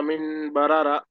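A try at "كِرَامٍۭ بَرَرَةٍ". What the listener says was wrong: మిన్ కాదు మిమ్ మీమ్ మీమ్ రెండు మీమ్లు రావాలి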